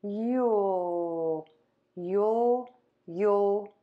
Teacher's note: say the word you and then as you finish that ooh part move the tongue to the back of the top front teeth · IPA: /jul/